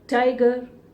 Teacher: ट नहीं होता है, टंग को ट्विस्ट नहीं करना, बल्कि हल्का सा छूना है